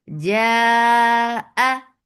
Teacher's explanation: Make it four counts long because this is mad. But muttasil wajib.